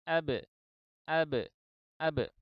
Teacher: ketika kita mengucap huruf ba yang berqalqalah, maka kedua bibir saling menjauh, sedangkan kedua rahang itu tidak. Ini berakibat kepada lubang atau celah yang dibuat itu lebih sempit daripada ketika kita mengucap huruf ba yang berfathah.